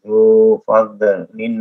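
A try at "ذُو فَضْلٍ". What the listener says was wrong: Dzu fadlin ditahan, Pak. Jangan dikolak-kolakan.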